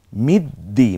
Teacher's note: দালটা দুইবার উচ্চারিত হলো, একবার পূর্বের হরফের সাথে আর একবার নিচে নিজের যে জের জবর পেশ আছে তা দিয়ে একবার উচ্চারিত হলো